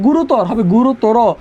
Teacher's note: শব্দের শেষে তর, তম, আন প্রত্যয় থাকে, সেক্ষেত্রে অয়ের উচ্চারণ কি হয়? ও হয়।